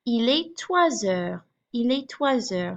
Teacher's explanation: So you hear that liaison from the S in toi to the beginning of heure. And so my S takes on more of a Z sound, just like it did with deux and dix.